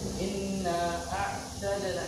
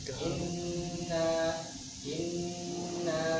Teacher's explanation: dibaca gunah dengan tempo yang panjang